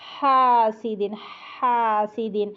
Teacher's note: ہا باریک بالکل اس طرح کہ پہلے ہا میں ہمس آئے گا، اس کے بعد ہا کی آواز آئے گی. پہلے سانس کی آواز ہوگی حاسدن حاسدن، دین حسد، اس طرح.